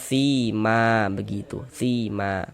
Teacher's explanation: Nah, terjadi kalau ada alif sebelumnya ada harokat fathatain, kemudian kita berwaqaf, berhenti di huruf yang memiliki fathatain tersebut, baru terjadi mad iwad. Panjangnya mad iwad 2 harokat. Tak sima, dibaca sima, dirubah jadi fathah, jangan dibaca siman, jangan.